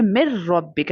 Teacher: ہمیں نون کا sound skip کر کے ڈائریکٹلی میم کو را کے ساتھ ملا دینا ہے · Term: بغیر غنہ کے ادغام